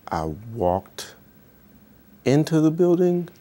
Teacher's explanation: you can hear the rising intonation at the end of his statement, and also just generally higher pitch is also a sign of deception.